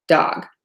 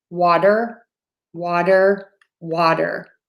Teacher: If I say water, my tongue is a little bit further back.